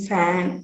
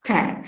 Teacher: Voiceless labiodental fricative, that is replaced by voiceless bilabial stop.